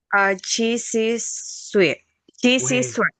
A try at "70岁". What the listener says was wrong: Wait, wait. SHI. SHI jadinya SHE.